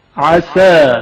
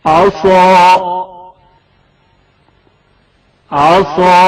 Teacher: सीन की आवाज हल्की और बारीक सुनाई दी जाएगी। عسى عسى عصا साथ की आवाज मोटी और पुर सुनाई जाएगी।